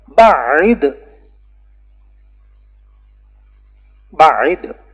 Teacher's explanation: یہاں دو قراءتیں ہیں، بتشدید العین و بغیر تشدید العین